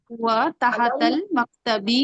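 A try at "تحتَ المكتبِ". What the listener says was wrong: तहतल, तहता पे जबर आएगी, ठीक है।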